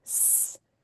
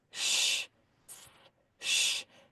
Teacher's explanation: I feel the air hissing through underneath these top teeth with that tongue, with the S, and then shh. It's much more rounded. Shh. My tongue is in a very different shape for that one.